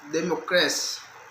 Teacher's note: The primary stress is put on the syllable ma, and the secondary stress is placed in the last syllable c.